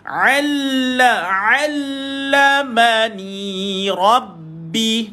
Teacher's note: Ain tu tolakkan. Duduk kat mana ain ni tuan-tuan? Tengah kerongkong tuan-puan.